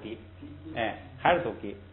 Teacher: 在后边音节要变成平声，要变成不送气，实际上就发音上等于谁等于嘎 ，等于嘎，所以还是读gi，还是读gi。咱们看这个就是说这个的呢它是个虚词，所以呢这个的一般都读轻声。咱们看他举的例子啊，空给名，空给名，空是他是吧？哎，他，你看